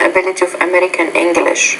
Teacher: you said English the end of your idea your tone fell there